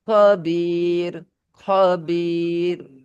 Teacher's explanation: আর এখানে ইয়া সাকিন থাকলে সে রকে বারিক অর্থাৎ পাতলা করে পড়তে হবে